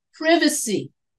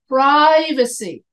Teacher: the British people they put the accent on the VA and we Americans we put the accent on the pro